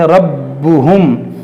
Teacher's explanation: इस रा को मोटा करेंगे, बा को खूब जमाव के साथ पढ़ेंगे